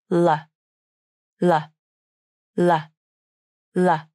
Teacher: In the first way of pronouncing the light L, the tongue tip comes up and touches the alveolar ridge, the bumpy place on the roof of the mouth just behind the front teeth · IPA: /l/